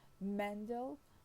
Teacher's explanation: the stress in Mendel is on the first syllable, while in Mendelian it is on the second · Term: stress shift